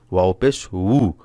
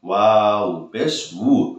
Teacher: বের হবে মুখ দিয়ে ঠোঁটের মাঝখান দিয়ে অর্থাৎ দুই ঠোঁটের মাঝখান দিয়ে হালকা বাতাস বের হবে